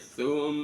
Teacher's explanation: Jadi mim tasydid dibaca gunna, didengungkan dulu. Jangan sumaro, tapi summa.